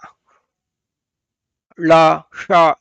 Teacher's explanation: ಮೂರ್ಧನ್ಯ ಅಂದ್ರೆ ಗಂಟಲಿನ ಮೇಲ್ಭಾಗ